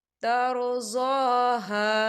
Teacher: خالی الف سے پہلے زبر ہے تو ہم اسے بھی 2 حرکت کے برابر کھینچ کے پڑھیں گے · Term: الف مدہ